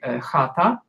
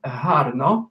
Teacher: there are two back fricatives in Ukrainian, that is, those that are pronounced at the back of the mouth. The first one appears in the word like chata.